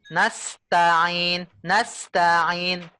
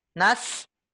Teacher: langsung loncat ke ta tanpa memisahnya jadi seperti ini nastain nastain jadi lidahnya berpindah ya dari posisi sa ke ta